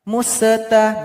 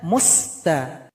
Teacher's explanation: Sin jangan dipantulkan. Museta gak boleh mus harusnya musta.